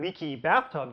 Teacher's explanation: its stress pattern is different from your typical noun phrase while the adjective noun pair leaky bathtub definitely has two clear standout syllables at the beginning of each word